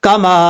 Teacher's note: اب اس کے بعد ہے کما، کاف زبر کا، میم الف زبر ما، کما، یہ کاف بریک ہے، دو نقطوں والا جو کاف ہوتا ہے اوپر پڑھا جاتا ہے، قاف پر پڑھا جاتا ہے، یہ جو کاف ہے یہ بریک ہے، کما، میم کے آگے الف مدہ، ایک الف کی مقدار لمبا کر کے پڑھیں گے